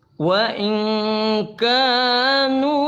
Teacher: nun sukun ketemu kaf inilah ikhfa ya